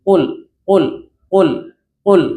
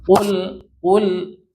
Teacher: Yang penting kita tahu secara artinya bahwa dia enggak keluar angin dan tebal. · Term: jahar